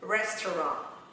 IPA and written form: ˈres.trɒnt (Restaurant)